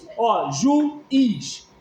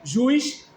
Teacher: Nós não temos um ditongo aqui, nós temos um hiato.